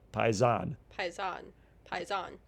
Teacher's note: Pon with the accent on the last syllable